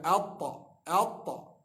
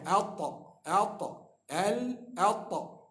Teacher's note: Ujung lidah belaga atas, langit atas. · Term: huruf ta